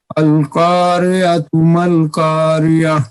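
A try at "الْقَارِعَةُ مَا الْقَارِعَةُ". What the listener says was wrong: قاف کو پر کریں، را کی کسرے کو باریک پڑھیں. نہیں نکلا قاف. القاریۃ، عین کو بھی کلیئر کریں. عین نہیں نکلا آپ سے. القاریۃ. نہیں، پھر پڑھیے، قاف کو کلیئر کیجئے، عین کو بھی کلیئر کیجئے. اس آیت میں قاف اور عین آپ کی توجہ کا طالب ہے.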